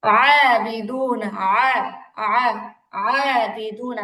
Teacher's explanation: আইনের উচ্চারণ একবারই হয়, এরকম না যে প্রথমে হামজার মতো পরে আইনের মতো, এরকম না, একবারই ডিরেক্টলি আইন উচ্চারণ করতে হবে।